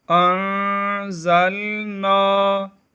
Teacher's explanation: ان دونوں کلمات میں اخفا ہوگا یعنی غنہ ہوگا